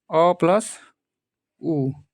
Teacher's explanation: मिलके ओ बन जा रहा है अ प्लस उ तो देखिए अ जो है कंठ से बोला जाता है और उ कैसे बोला जाता है ये ओट से बोला जाता है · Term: कंठ ओट